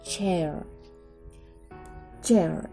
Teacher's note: produced by pressing the front part of the tongue against the front parts of the roof of the mouth